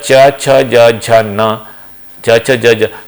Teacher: these 5 consonants they produce due to providing a constriction after the velum, it is known to be palatal.